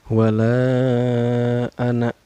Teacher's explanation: Cara bacanya dipanjangkan 4 harkat atau 5 harkat ya. Wala anak. Nah, anaknya ini dibaca pendek ya. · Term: mad jaid mungpasil